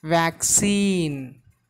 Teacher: The stress should be given on very first syllable.